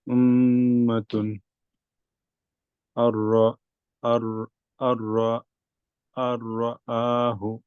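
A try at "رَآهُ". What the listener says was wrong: রটা আরেকটু হেভি করতে হবে। আর রাহু, আর আর রাহু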